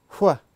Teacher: The next sound we're going to look at is the W sound, but specifically when W is followed by an H. In standard British English, we just say wuh. But in a Glaswegian accent, it's aspirated like this. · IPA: /w/